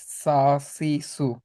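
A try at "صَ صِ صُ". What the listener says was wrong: না, এটা কিন্তু রয়্যাল একটা নাম, ইয়া হরফ। রয়্যাল হরফ যেগুলোকে বলবো ওগুলো হচ্ছে সা উচ্চারণ হবে, এগুলো হচ্ছে স, মানে আয়ের জায়গায় অ উচ্চারণ হবে। স, বলো। স সি সু।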